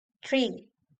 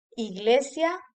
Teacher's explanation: El sonido de la palabra inglesa tree es muy similar a la I española. Quizá la I española un poco más corta.